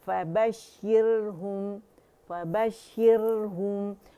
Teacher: रा जो है बारीक पड़ी जाएगी क्योंकि उससे पहले कसरा आ रही है रा साकिन से पहले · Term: रा बारीक